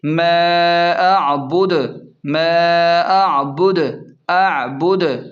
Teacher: اور وقف کی صورت میں دال پر پیش ہے تو اسے ساکن کر دیں گے اور قلقلہ بھی ہوگا، یعنی وقف کی صورت میں دال کو جھٹکا دے کر پڑھیں گے